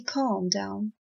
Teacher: I never say calm down stressing the L it shouldn't be uttered it shouldn't be enunciated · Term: silent letters